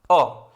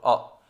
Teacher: इसका उच्चारण में जीव का मध्य भाग थोड़ा सा ऊपर उठता है। अ, सिर्फ अ ही एक ऐसा स्वर है जिसमें जीव का बीच वाला हिस्सा जो है बोला जाता है, बाकी इसमें कोई हिस्से का कोई कुछ नहीं इस्तेमाल किया जाता है। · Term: मध्य स्वर